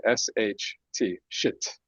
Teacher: The I is so reduced that it's almost going to not exist anymore. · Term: schwa